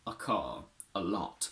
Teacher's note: its weak form is just a simple schwa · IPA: /ə/